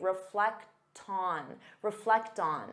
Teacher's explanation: because you have that t sound you can transfer it to the next sound and say reflecton reflecton so it sounds like one word